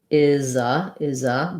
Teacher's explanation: So in this case, it's going to sound like is a. The Z is just going to link.